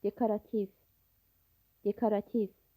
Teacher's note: Bəli. Sözdə vurğu son hecaadır. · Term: vurğu son hecadadır